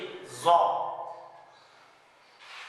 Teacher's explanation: और यहाँ पर हमारे पास वाव है तो ज़्वा की साउंड पे जरा गौर कीजिएगा, यहाँ पर हमारी जुबान जो है ऊपर वाले दांतों के पीछे लगेगी, मसूड़ों के साथ बिल्कुल भी नहीं लगेगी, ना कि जहाँ पर हमारे दांत जो है उनकी जड़ें उनके भी साथ नहीं, बिल्कुल पीछे लगेगी ज़ौ।